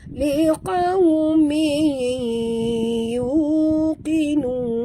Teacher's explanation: Tanwin baris 2 bawah bertemu dengan ya, kita masukkan ke dalam ya disertai dengung, sepenuhnya dengung, 2 harakat ya. Tidak ada sembunyi-sembunyi, masuk terus dan dengung.